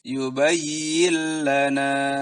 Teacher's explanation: di sini nun sukun dimasukkan ke huruf lam bilagunnah tanpa dengung jadi masukkan dan langsung disambung terus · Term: idgham bilagunnah